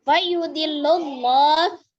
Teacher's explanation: alif lam yang melekat pada lafaz Allah sebelumnya berharokat dhamma, maka dibaca dengan tafkhim tebal